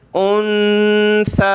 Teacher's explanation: यानी नून साकिन पर गुन्ना किया, नून साकिन पर, और इस तरह तनवीन पर गुन्ना किया। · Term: इख्फ़ा